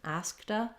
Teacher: when we have a T at the end of a word and we link to a vowel sound, we use a flap for that T. It sounds more like a D.